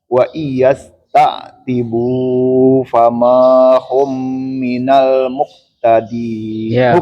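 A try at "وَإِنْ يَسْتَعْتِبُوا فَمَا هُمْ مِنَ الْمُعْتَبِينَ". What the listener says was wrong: Ya, khalas cukup. Alhamdulillah.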